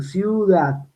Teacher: yo pronuncio ciudad, la I es cerrada y la U es cerrada. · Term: vocal cerrada más vocal cerrada